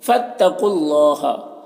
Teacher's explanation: یہاں پر جو ہے قاف کو پر پڑھیں گے، یہ حروف مستعلیہ میں سے ہے، اور یہ واو اور یہ دونوں الف اور لام میں کوئی حرکت نہیں ہے، تو اسے نہیں پڑھنا ہے۔ اور اللہ کے لام سے پہلے قاف کے اوپر پیش ہے، تو اللہ کے لام کو پر پڑھیں گے، کھڑا زبر ہے، یہ الف مدہ کی طرح ہوتا ہے، اسے 1 الف کے برابر کھینچیں گے۔